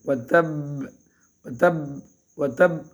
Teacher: یہ با جو وتب میں با مشدد ہے اس میں اگر ہم وقف کریں گے تو اس میں حرکت بھی دیں گے تھوڑی سی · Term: قلقلہ